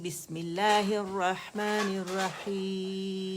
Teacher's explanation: میم پہ آپ نے آواز ایک کاؤنٹ کے لیے چلانی ہے